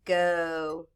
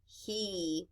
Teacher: Our vowels, when we have this CV syllable pattern, are long. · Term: long vowel